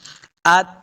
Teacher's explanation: بعض لوگ پڑھتے ہیں ات، ات یہاں پہ نہیں کرنا ہے، تا کے اوپر قلقلہ نہیں کریں گے. ات تا کے اوپر جب ساکن کریں گے تو آواز ختم ہو جانی چاہیے، ڈبل آواز نہیں بالکل آنی